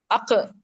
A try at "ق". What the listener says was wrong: Yes yes, very good.